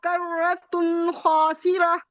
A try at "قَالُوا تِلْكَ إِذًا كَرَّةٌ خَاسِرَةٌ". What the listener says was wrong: یہ تل نہیں ہے، یہ تن ہے، تن.